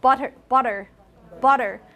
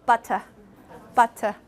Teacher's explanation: change that t to a truly aspirated T and then drop the r replace it with the schah and you become it become but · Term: British accent